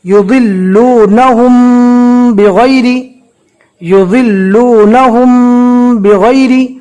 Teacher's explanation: अब जज्म वाली मीम के बाद बा आ गई तो अब यहाँ पर होगा मीम साकिन का इख्फा। मीम साकिन के इख्फा को कैसे पढ़ेंगे? गुन्ना के साथ पढ़ेंगे।